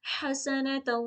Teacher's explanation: हा को एकदम प्रॉपरली हलक के बीच वाले हिस्से से निकाल अदा करेंगे